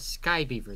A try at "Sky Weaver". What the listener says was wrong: Weaver. You're saying beaver. Weaver. Weaver. Sky Weaver. Like a sky sower.